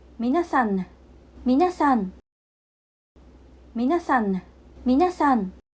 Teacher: When the Japanese ん is at the end of a word, it is pronounced with the tongue still inside the mouth and the sound resonates in the nasal cavity.